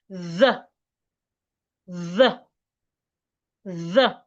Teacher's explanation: Now, let's move to the voiced th just as the voiceless th is pronounced. Put your tongue in between your teeth. But this time, make sure you feel vibration on your vocal cord.